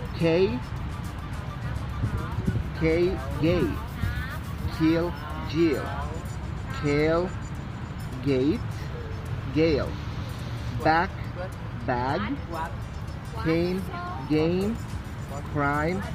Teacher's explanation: In pronunciation the back tongue is raised to touch the soft palate. K is voiced vowel plosive or vowel stop and G is voiced vowel plosive and vowel stop.